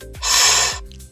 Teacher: Labiodental, the lower lip touches the upper teeth